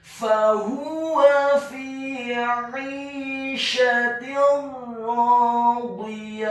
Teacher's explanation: Selanjutnya huruf ya-nya dibaca tipis fathah 1 harokat dan di akhir ayat huruf ta marbutahnya diubah menjadi huruf ha yang tafkhim yang tebal dan dibaca sukun